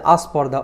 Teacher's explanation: এই যে স্পর্ধা শব্দটি ছিল তার আগে আমরা আ স্বরধ্বনি যুক্ত করেছি। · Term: আদি স্বরাগম